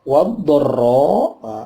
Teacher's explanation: alnya al-ta'rif ketemu dot, namanya al-syamsiyah, wanya langsung masuk ke dot